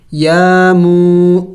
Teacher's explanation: या के ऊपर कड़ी ज़बर है, एक अलिफ का मकदार लंबा करना है, और वाव मद्दा है, मीम वाव पेश मू, इसको भी एक अलिफ का मकदार लंबा करना है।